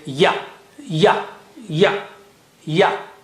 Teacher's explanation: The middle of the tongue touches the palate or roof of the mouth, and you say ya, ya, ya, ya. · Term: letter Ya